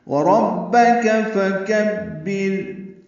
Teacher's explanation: واو ہونٹوں کی نہ تمام گلائی سے ادا کریں گے، را پر پڑھیں گے، با سے ملائیں گے، کاف باریک ہے، فکبر میں کاف باریک ہے اور با سے ملانا ہے، بر میں را باریک ہے، فکبر.